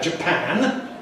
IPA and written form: ʤəˈpæn (Japan)